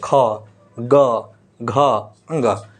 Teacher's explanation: इनका जो उच्चारण स्थान है वह क्या है समान है इसे हम कंठ से उच्चारण करते हैं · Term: कवर्ग